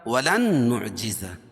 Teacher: نون ساکن کے بعد ادغام مع الغنہ کے 4 حرفوں میں سے نون ہے تو یہاں غنہ کر کے پڑھیں گے. نعجزہ، نعجز، جیم اور زا دونوں کو الگ الگ کر کے پڑھیں گے.